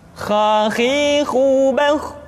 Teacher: dikeluarkan dari pangkal tenggorokan. Kha, pangkal tenggorokan. Diucapkan dengan mengalir nafas. Atau lebih praktisnya, pengucapan huruf kha persis terdengar seperti orang yang tidur dalam keadaan mengorok.